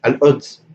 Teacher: actually Qaf can be pronounced Hamza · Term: Madani accent